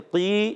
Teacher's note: یا مدہ ہے، ایک الف کھینچیں گے